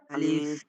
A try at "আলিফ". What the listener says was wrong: আলিফ। আলিফ টান দিয়ে নয়, আলিফ।